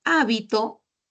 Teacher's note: En el caso de hábito, la mayor fuerza de voz está en la antepenúltima sílaba.